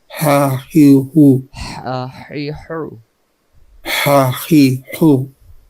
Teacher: লম্বা হা হলকের মধ্য থেকে শুশু করে। শুশু করে পড়তে হয়।